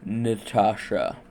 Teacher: The second А is stressed, so it produces the stressed ah sound while the vowel before it produces the short ɐ sound. The final vowel А, being after the stress, produces the sound uh as a ə.